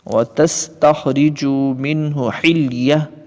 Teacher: حالت وقف میں گول تا ہا سے بدل گئی ہے